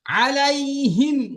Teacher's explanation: তো এখানে মিম সাকিনের কায়েত এটা আছে তো এখানে কোন টান অথবা গুন্না নেই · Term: বিনা গুন্নায়